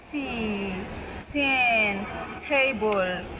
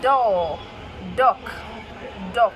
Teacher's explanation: the t and k sounds are voiceless, while the d and g sounds are voiced